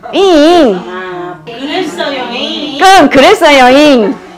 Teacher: 그래서 어금니의 특징처럼 뭐냐 콧소리가 나는 거야. 그래서 지금 전라도 방언에 잉 그랬어요잉 그랬어요잉 그 잉 하는 그게 이 옛 이응이야